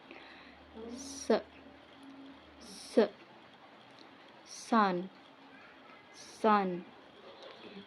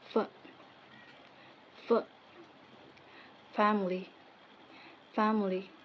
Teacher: bi d ha ge go second is prikatif so predikatif is the airflow is constricted but not completely blocked creating turbulence that produce a hising or scrapping Sounds se se sun sun